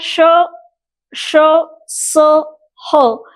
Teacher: एक प्रकार से आप देखिएगा श श स ह, इन ध्वनियों का जब उच्चारण करते हैं तो आपको पता चलेगा कि इन ध्वनियों के उच्चारण में एक प्रकार की ऊष्मा, स्लाइट सी ऊष्मा निर्माण हो रही है, थोड़ा सा घर्षण हो रहा है, इसलिए ये 4 ध्वनियां जो है वो आप लोगों को ऊष्म ध्वनियां कहलाई गई है